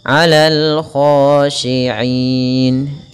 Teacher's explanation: kha tebalkan sedikit karena dia huruf isti'la